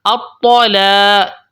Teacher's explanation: لوگ کیا کرتے ہیں، تو موٹا نا الطلاق نہیں، لام کی وجہ سے لام باریک حروف میں سے ہے تو اس کے بعد الف ہے، الف سے پہلے باریک حرف لام آ چکی ہے تو آپ نے اس کو باریک ہی پڑھنا ہے. الطلاق، تو کو موٹا کر کے لام کو باریک، الطلاق، اور اس کے بعد الف کو بھی باریک، الطلاق مرتان.